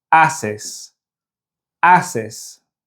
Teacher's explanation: So if we go through the conjugated forms of hacer, you'll see how the H is never pronounced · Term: H is silent